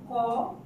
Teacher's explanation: ক বলতে গেলেই ক এটা বলতে গেলে ক যোগ একটা অ চলে আসছে